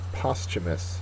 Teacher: It's an adjective. First syllable is accented.